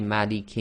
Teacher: so effectively we've got a long vowel with a sakin letter so this can be two four or six long